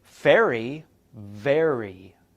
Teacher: in both of these sounds you put your top teeth onto your lower lip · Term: fricatives